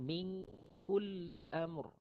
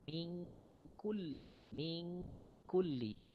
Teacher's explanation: Maksud ikhfa hakiki itu adalah sembunyikan nun mati, kemudian terus pergi kepada kaf.